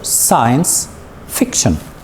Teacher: the stress is in the beginning of the two words